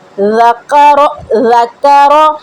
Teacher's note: دال کو نرمی سے پڑھنا ہے، کاف کو باریک پڑھنا ہے، را کو موٹا پڑھنا ہے